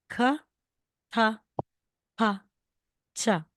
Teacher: one more stroke was added the basic letters make the sound ka ta pa Cha with strong airflow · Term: aspirated